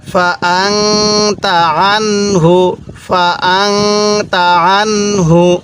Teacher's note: এই নুন সাকিনের পরে এই তাটি হলো ইকফার হরফ, এজন্য আমি এই নুন সাকিনের মধ্যে গুন্নাহ করছি